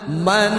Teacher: Man man jelas saja tidak didengung ya. Ditahannya satu harakat saja man. Sekedar untuk menjelaskan n-nya man izhar a in.